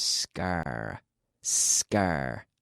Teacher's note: there's no vowel sound before the s